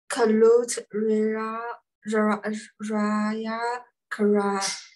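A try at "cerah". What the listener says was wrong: Kara, pronoun C. Sound of C is what? Not k. Sound of C. Yes, kara. Kulit raya kara.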